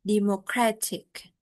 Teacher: the stress shift from the first syllable democrat to the third syllable democratic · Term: stress shifting suffixes